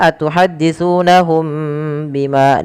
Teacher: bertemu dengan ba karena ia ada bacaan yang namanya ikhfa syafawi ikhfa syafawi terjadi apabila ada mim mati bertemu dengan huruf ba maka suara mimnya wajib ditahan · Kemudian ketika melafalkan ya atuhadditsunahum bima, di sini wajib ditahan di lafal mim matinya yang ketika bertemu dengan ba, karena ia ada bacaan yang namanya ikhfa syafawi.